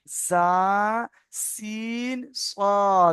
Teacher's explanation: সিটির মতো আওয়াজ করে তিনটি অক্ষর পড়তে হয় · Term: ছোট্ট সিন